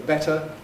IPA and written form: ˈbetə (better)